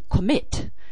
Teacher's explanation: in commit the stress is on the second syllable